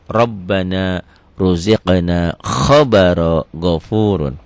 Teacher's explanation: Jadi ro yang berbaris di atas itu dibaca tebel. Tebel tafkhim.